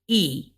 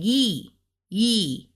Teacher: it's like they put ye like a y almost in front of it